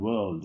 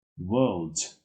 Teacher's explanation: You can speak the R, but it's very soft. You can speak it, you can omit it.